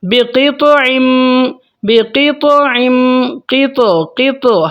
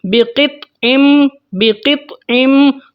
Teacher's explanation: ہم ہلکا سا جھٹکا دیتے ہیں، اس کو ہم بولتے ہیں قلقلہ صغیرہ